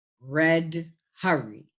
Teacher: Lowercase alphabet letter R is the IPA symbol for R. It is a voiced sound and does not have a voiceless cognate, even though in the chart, you see there are two sounds in one box, but there's a line between them, and they're both voiced. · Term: glides